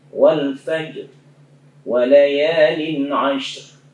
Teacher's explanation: Itu walaupun kita wakaf tapi harus nampak ra-nya itu. Seperti wal fajr, itu ra-nya belum nampak, harus munculkan getaran ra-nya ya. Wal fajr walayalin ashr, jadi harus ashr, nggak boleh ash saja, harus ra-nya juga muncul.